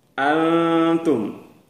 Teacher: jadi bunyi Nun tidak terdengar keras · Antum. Jadi bunyi nun tidak terdengar jelas an, tapi an sudah masuk ke bunyi ta. Dia tersamar dengan bunyi ta. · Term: ikhfa Haqiqi, ikhfa